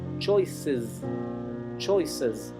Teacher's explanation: la E final de choices, elecciones, se pronuncia casi como una I. Y fíjense que la C se pronuncia como una suave, pero la S final se pronuncia como una S zumbada.